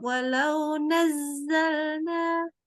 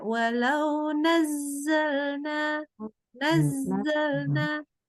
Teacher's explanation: Ngomong ini zainya coba nazal. Suaranya nggak boleh ditutup ya. Suara kalau zai jangan ditutup. Walau nazzalna.